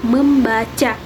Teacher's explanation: Contohnya pengimbuhan prefiks me pada kata dasar baca. Nah, akan memunculkan bunyi sengau M yang semula tidak ada, sehingga menjadi kata membaca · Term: pemunculan fonem